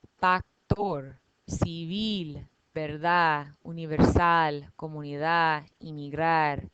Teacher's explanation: All of these words end in a consonant other than N or S. And I'm putting the stress in the last syllable.